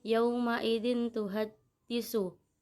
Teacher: karena ada tanwin bertemu dengan huruf ta, cara membacanya samar. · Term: ifa hakiki